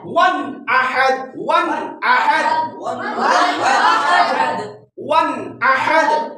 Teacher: ون یہاں پر نون غنہ نہیں کرنا, ٹھہرنا نہیں ہے